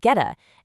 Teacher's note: It all just flows. Get a mushes together to sound like getta. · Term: connected speech